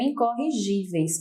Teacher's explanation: incorrigíveis, onde a penúltima sílaba é acentuada